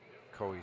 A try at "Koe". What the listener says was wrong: His last name is pronounced Kui. You're saying Koi.